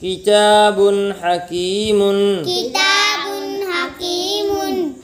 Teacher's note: تنوین کے نون کو ظاہر کر کے پڑھیں گے،